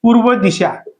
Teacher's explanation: रफार असेल तर काय होतो, या रफारचा उच्चार करताना या पूर्वीच्या अक्षरावर काय होतो, आघात होतो. आघात होतो, याचा उच्चार काय होतो, म्हणजेच लांबून जातो.